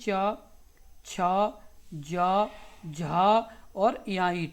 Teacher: छ ध्वनि का उच्चारण स्थान कौन सा है? तो तालव्य।